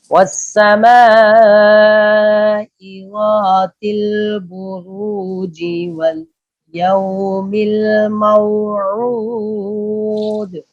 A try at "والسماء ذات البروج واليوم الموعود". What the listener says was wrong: ذات الزال باریک ہوتی ہے، پھر پڑھیے.